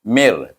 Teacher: Jadi kita kena idgham min kepada ra tetapi dengan tanpa dengung, iaitu bila gunnah.